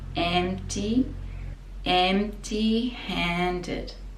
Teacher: So the P is very silent, you just put the lips together.